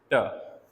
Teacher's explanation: tip of the tongue touches alveolar ridge. तो यहाँ से हमारे पास जो है ट साउंड प्रोड्यूस होती है।